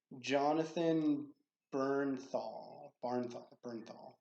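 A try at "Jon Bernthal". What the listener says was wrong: I don't know if there's an N in it. I think it's just Berthal.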